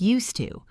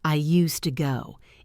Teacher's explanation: This phrase used to flows very well because the d and the t connect.